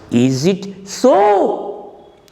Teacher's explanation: Is it with a falling intonation? So with a rising intonation. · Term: fall and rise